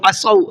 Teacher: ذلك بما عصوا وكانوا يعتدون، عصوا صاد کو منہ بھر کے پڑھنا ہے۔